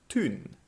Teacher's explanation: historically town was pronounced with the long vowel tun similar to how some people in scotland still say it today